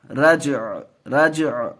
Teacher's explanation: عین کی آواز آئے گی، حرکت کی نہیں